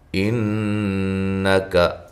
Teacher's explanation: نون مشدد پہ غنہ ضروری ہے، غنہ کی مقدار ایک الف ہے